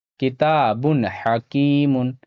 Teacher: یہاں پہ تنوین ہے اور تنوین کے بعد یہاں پہ ہا ہے، ہا حروف حلقی میں سے ہے، یہاں پہ تنوین کا اظہار ہوگا · الف سے پہلے زبر ہے، الف مدہ تھوڑا کھینچ کر پڑھنا ہے